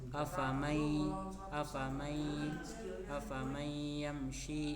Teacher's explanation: Dan cara membaca itu diidgamkan atau dimasukkan sepanjang dua harakat. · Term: idgham bighunah, idgham bi gunnah